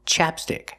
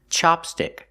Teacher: Chapstick used the short ah sound like black cat, chapstick. And chopstick used the short ah like hot and stop, chopstick.